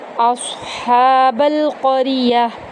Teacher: مثلاً، اصحاب القریہ، حمزہ کو صاد کے اندر داخل کریں گے اور پر پڑھیں گے، ہا کو وسط حلق سے ادا کریں گے، با کو لام میں داخل کریں گے، قاف اور را دونوں پر پڑھے جائیں گے۔